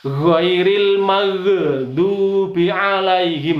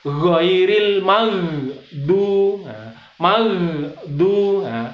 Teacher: Maghdu itu juga tidak boleh dipantulkan karena itu bukan huruf qalqalah, bukan huruf yang bendal.